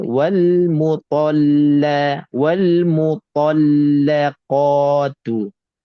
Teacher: Ta tebal, lam tipis, qa tebal, tu tipis balik. Jadi tebal, tipis, tebal, tipis.